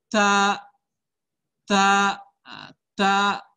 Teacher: Dia juga huruf hamas. Jadi dalam pelafalnya ada seperti desisan udara yang keluar. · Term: huruf ta